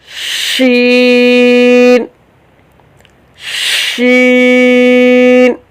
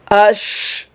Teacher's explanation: شین میں جو صفت ہے وہ صفت ہمس ہے۔ ہمس میں سانس جاری ہوتا ہے، جب سانس جاری ہوگا تو اسے تھوڑی سی سپیس چاہیے، کچھ جگہ چاہیے جہاں سے سانس باہر نکلے۔